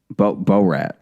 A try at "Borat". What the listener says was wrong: Borat. The first few times you said Bo-rat, and that is just not how it's pronounced.